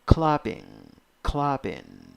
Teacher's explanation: the stressed syllable is the first syllable